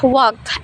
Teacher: Pronounce it walked. As if the ending were a T